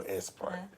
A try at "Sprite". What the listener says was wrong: No S Sprite. Sprite. She be trying to say Sprite. She was saying S Sprite. I'm like, no, say Sprite. S Sprite. Like Sprite. S Sprite. Like, no, stop saying S Sprite. Just say Sprite.